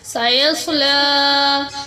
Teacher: صاد کو پر پڑھتے ہوئے لام کو لمبا کریں گے، اس کے اوپر کھڑی زبر ہے۔